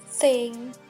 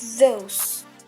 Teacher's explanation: There are two consonant in dental. The first one is produced without vibration. For example, like thing. And the second one is produced with vibration like those. You can feel the vibration on your vocal cord.